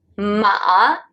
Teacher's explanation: the full third tone sounds like this ma go down and then up again